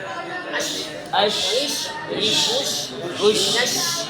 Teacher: حمزہ جیشین شین اش اش لانا اش شین آواز پھیلے گی شین کے اندر صفت تفشی پائی جاتی ہے اس کا معنی ہے آواز کا پھیلنا تو منہ میں آواز پھیلے گی